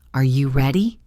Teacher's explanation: Let your voice go up at the end.